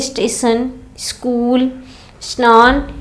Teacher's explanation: अगर कहेंगे स्कूल तो आपको ई सुनाई देता है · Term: पूर्व श्रुति